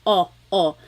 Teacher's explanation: I think of it like having a ball in your mouth your tongue gets kind of pushed back and down a little bit and the inside of your mouth is open and wide